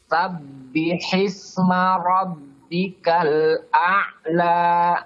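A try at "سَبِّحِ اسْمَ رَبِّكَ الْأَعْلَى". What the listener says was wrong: Jadi rabbika jangan masuk hidung, jangan rabbika. Rabbika.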